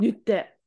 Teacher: So it's nutte with the glottal stop.